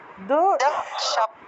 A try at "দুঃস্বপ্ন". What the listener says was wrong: স্বপ্ন হবে না, স্বপ্ন হবে না, দন্তস্বর নিচে বফলা আছে, দন্তস্বরের সাথে বফলা আছে, তাহলে সুও উচ্চারণ হবে, সুও। আপনি ভালো করে আগে দেখুন, ভালো করে, দন্তস্বরের নিচে বফলা আছে, বফলা থাকলে রস্যকার অন্তস্থ ও আসে, তাহলে সুও উচ্চারণ হবে, সুও। তাহলে দুঃস্বপ্ন, দুঃস্বপ্ন, দুঃস্বপ্ন